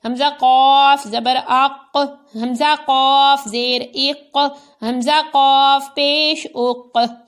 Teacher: لیکن قاف ساکن ہے تو قلقلہ بھی کریں گے اور پر بھی پڑھیں گے کیونکہ یہ قاف حروف مستعلیہ میں بھی شامل ہے۔